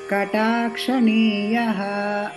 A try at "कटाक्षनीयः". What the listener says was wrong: எக்ஸலென்ட்டா சொன்னீங்கமா எக்ஸலென்ட்டா சொன்னீங்க